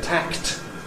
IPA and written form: tækt (tacked)